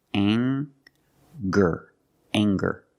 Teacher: Let's talk about anger. We have the nasal sound plus the hard G, the G sound. Together, anger.